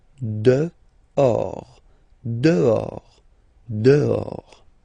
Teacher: Okay, so remember final S not pronounced, and then this H in French doesn't exist phonetically, so you don't pronounce it